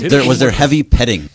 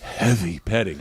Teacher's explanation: Listen how he hits the H way too hard.